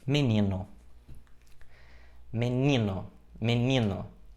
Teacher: a penúltima sílaba da palavra é a sílaba tônica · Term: paroxítona